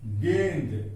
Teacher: जब हम गेंद बोलते हैं तो गे के साथ हल्का न का उच्चारण होता है। जब गेंद बोलते हैं तो गे के साथ हल्का न उच्चारण होता है, और उस हल्का न के लिए हम क्या करते हैं, ऊपर में हम बिंदु देते हैं।